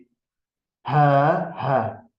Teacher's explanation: dəyərli dostlar, burda boğazın ortasından gəlir səs. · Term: boğaz hərfləri